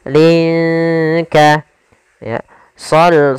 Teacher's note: Sama hukum tajwidnya yaitu ikhfa. Cara membacanya samarkan linnya ke huruf kaf.